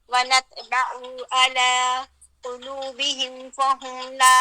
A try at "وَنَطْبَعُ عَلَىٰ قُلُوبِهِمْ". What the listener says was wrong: درمیان میں سکتہ نہ لیں، وَنَطْبَعُ عَلَىٰ قُلُوبِهِمْ، یعنی عَلَىٰ پھر قلوبہم اس کے بعد وہ کریں، اگر آپ تھوڑا سا سٹے لیں گے تو وہ کیا ہوگا، ایسی پوزیشن آ جائے گی جیسے سکتہ ہو رہا ہو، ٹھیک ہے؟